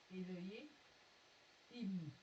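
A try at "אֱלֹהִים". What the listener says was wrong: On fait une liaison entre le I et le même.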